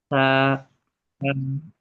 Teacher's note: সা, আপনার যে জিভ আছে না, জিভের যে আগাটা আছে, ওই আগা আপনার সামনের উপরের দাঁতের আগায় লাগিয়ে দেন।